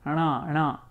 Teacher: it's kind of like pronouncing a na sound, a na, but you're doing the cerebral of it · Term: nasal of the cerebrals